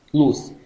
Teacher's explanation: oral lateral approximant sonora alveolar